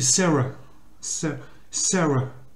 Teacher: quand le A il se trouve en fin de mot, il a tendance à se prononcer E. Puisqu'il n'est pas accentué.